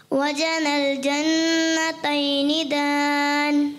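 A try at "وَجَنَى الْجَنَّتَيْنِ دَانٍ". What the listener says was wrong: फिर आपने गुन्ना थोड़ा कमज़ोर कर दिया, दोबारा।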